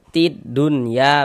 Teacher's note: E alif lam syamsiyah itu disebut juga dengan idgham syamsiyah. Karena cara membaca huruf lamnya dibaca idgham nih. E jadi dari ti dari ti ini dia langsung masuk ke huruf dal ini.